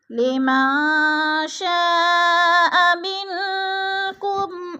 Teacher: اخفا کریں گے، غنہ کریں گے، ناک میں آواز لے جائیں گے. لمن شاء منکم آئی من پہ اخفا ہو رہا ہے، نون ساکن کے بعد کاف حروف اخفا میں سے آ گیا ہے تو ادھر اخفا کریں گے، ناک میں آواز کو چھپا کر پڑھیں گے.